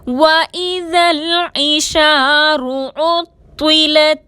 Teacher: عین کو حلق سے ادا کریں گے، شین کے ساتھ الف مدہ ہے، 2 حرکت کے برابر کھینچ کر پڑھیں گے، رو پر پیش ہے، رو کو موٹا پڑھیں گے، رو پر زبر یا پیش ہو تو اس کو موٹا پڑھا جاتا ہے اور زیر کے ساتھ رو کو باریک پڑھتے ہیں۔ اطولت میں طوا حروف مستعلیہ میں سے ہے، موٹا پڑھیں گے اور مشدد ہے، اس کو 2 بار پڑھیں گے۔